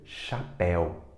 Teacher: ditongo duas vogais na mesma sílaba e é um ditongo aberto compara chapéu com a palavra seu seu é fechado nenhum ditongo